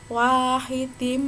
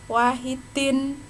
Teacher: Idgham masuk bi dengan gunnah dengung, maka masuk dengan dengung. Wahidim, bukan wahidin, tapi wahidim, siap-siap masuk ke mim. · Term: idgham bi gunnah